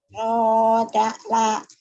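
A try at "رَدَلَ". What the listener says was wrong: Jangan rodak lah. Siapa namanya? Yuk, nih, Kak, si, Yun, jangan putus-putus.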